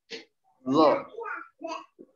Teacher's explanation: Ujung lidah bertemu dengan ujung gigi seri atas. Maka lidahnya dikeluarkan sedikit. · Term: huruf zo